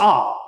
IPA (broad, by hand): ɑ